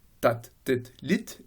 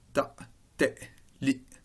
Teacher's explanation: Et dans cette comparaison, on remarque que lorsque l'on a un te final dans les dialectes du Nord, tat, tet, lit, et bien dans les dialectes standards, on a une occlusive glottale. Ta, te, li.